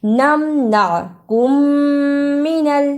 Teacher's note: میم ساکن کی آواز کو تھوڑی دیر منہ میں چھپا کر غنہ کرنا ہے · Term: ادغام شفوی